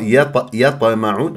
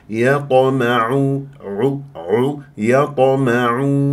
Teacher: لازم تجيب تفخيم مرتبه رابعه وقلقل تضرب المخرج وتهرب بسرعه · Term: قلقله صغرى